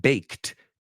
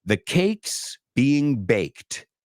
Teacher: even though it's an ed D it's a t sound